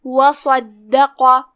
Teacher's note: कलिमत वसद्दक़ में यहाँ हर्फ साद है, साद हुरूफ तफ़ख़ीम में से, लिहाजा उसे भारी आवाज़ में मुंह फुला के अदा करना है। फिर हर्फ दाल है और उस पर तशदीद है तो ध्यान रहे 2 हर्फ के मकदार में दाल को पढ़ना है।